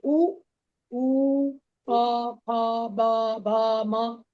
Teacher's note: उ प फ ब भ म सभी में ओष्ठ का सहायता लिया जा रहा है